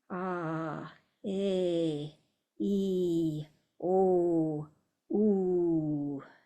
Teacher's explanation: really accentuating the length of the long vowels there